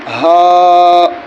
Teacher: یہ چھوٹی ہا ہے، یہ سینے کی طرف سے ادا ہوگی۔